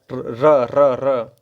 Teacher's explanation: जिसके उच्चारण में जीव तालू से लुड़क कर स्पर्श करें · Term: लुंठित व्यंजन